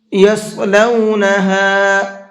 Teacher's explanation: صاد کو منہ بھر کے پڑھیں گے